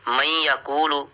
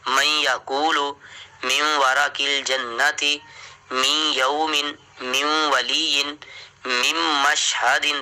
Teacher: آپ نے بس یہ قانون یاد رکھنا ہے کہ اگر جزم کے فوراً بعد شد آ جائے تو جزم کو چھوڑ دینا ہے، شد کو پڑھنا ہے، ٹھیک ہے۔ من یقول، نون جو ہے ادغام ہو گیا، نون کا ذکر ہی ختم ہو گیا